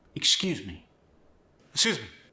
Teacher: And the X sound went to an S sound in excuse.